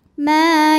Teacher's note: lam cara membacanya dipanjangkan lamnya dua harakat Innallaha yahkumu ma ma Mad Thobi'i dahohiri karena ada Alif didahului baris fathah maka huruf mim panjang dua harakat